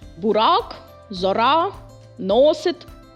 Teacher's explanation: Збереження твердості приголосних р, т, д, н, л, ц.